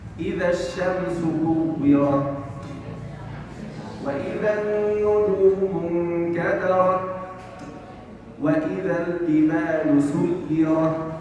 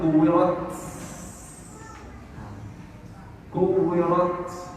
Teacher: الهمس هنا همس التاء وليس همس سين